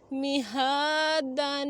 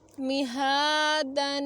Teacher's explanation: میم زیر می، ہا کھڑی زبر ہا، میہا دال دو زبر الف دن میہادن. ہاں کو ایک الف کی مقدار تک لمبا کریں گے، اوپر کھڑی زبر ہے